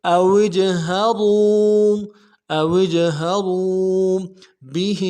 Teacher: وا کو واو کے ساتھ ملانا ہے، واو مدہ ایک الف دال میں کھینچیں گے